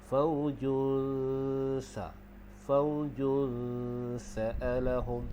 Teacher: Maka di sini kita dah tahu dah, yang ini dia jadi hukum ikhfa haqiqi. Okey, jadi dengung dua harakat. Cara dengung dia iaitu kita renggangkan sedikit lidah.